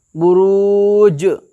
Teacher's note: تو جزم حروف قلقلہ کے 5 حرف میں سے، اس لیے جزم جیم کو قلقلہ کریں گے، یعنی اپنے مخرج سے ٹکر کھا کر کے الگ ہو کر کے اس طریقے سے ادا کریں گے